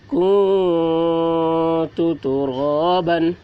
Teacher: نون ساکن کے بعد حروف اخفا میں سے تا آ رہا ہے، اس لیے نون کی آواز کو ناک میں چھپا کر پڑھیں گے، اس کو اخفا کہتے ہیں۔